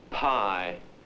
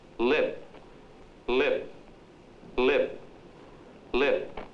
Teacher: if the word Pi is pronounced with a lighted match held before the mouth the flame goes out · There is hardly a flicker in the P sound in the word lip.